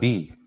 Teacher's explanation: जैसे ही मैं अल्फाबेट्स की बात करता हूं, बी, जैसे ही मैंने बोला बी, मुझे एक प्रकार का प्रेशर लगाना पड़ा, जोर लगाना पड़ा, जहां मेरे दोनों होठ आपस में जुड़ गए